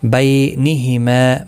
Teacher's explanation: بی یا لین ہے، تھوڑا نرمی کے ساتھ کھینچ کر ادا کریں گے. ما الف مدہ ہے، ایک الف کی مقدار کے برابر کھینچ کر پڑھیں گے.